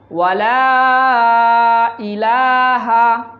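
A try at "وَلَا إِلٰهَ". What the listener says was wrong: এখানে লার মধ্যে টান দিতে হবে।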